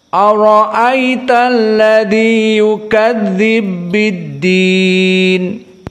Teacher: terjadi idgham alkabir yukadzibu biddin pertemuan ba yang keduanya mutaharikkan · Pertemuan ba yang keduanya mutaharrikan. Yukadzibu bidhammah dengan biddin ba bil kasrah. Maka diidghamkan, dinamakan idgham al-kubra, dan idgham ini hanya ada pada riwayat As-Susi an Abi Amr.